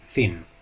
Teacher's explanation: voiceless dental fricative th, the th sound in thin